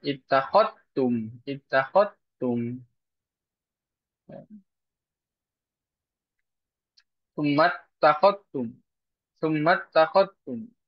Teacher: Zalnya dihilangkan. Artinya dihilangkan adalah ya langsung idgham atau masuk huruf ta.